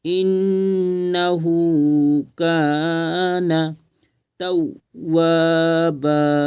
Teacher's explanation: ہے، گنہ کریں گے، آواز کو ناک میں چھپائیں گے، انہو، ہا کو کھینچیں گے کیونکہ الٹا پیش ہے، الٹا پیش واو مدہ کے برابر ہوتا ہے، اس لیے کھینچ کر پڑھیں گے، انہو کان توابا، تا واو زبر تو، واو الف زبر وا،